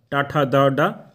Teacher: इस प्रक्रिया में जीभ का मूर्धा का स्पर्श करती है